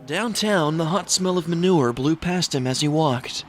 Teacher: The narrator also speaks in the same cadence throughout the hour and 2-minute runtime with the sound of his finished sentences always having the same raised eyebrow questionlike tone, giving the dialogue an unserious impression.